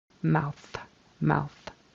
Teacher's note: thing and kind of made that th a d when it should have been a soft th an unvoiced th